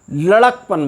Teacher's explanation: लड़का में जो दीर्घ आ है उसके स्थान पर ह्रस्व आ हो करके लड़कापन नहीं बना, लड़कपन बन गया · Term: ह्रस्वीकरण